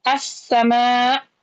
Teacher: Dia sudah enggak mungkin dibaca al pasti langsung idgham as begitu assama gitu ya.